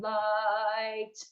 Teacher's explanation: in something like light or night or Christ, we sing on that ah sound, light. And when we close it, it goes to the E.